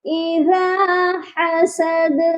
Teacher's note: اور حسد کے دال پر بھی قلقلہ ہوگا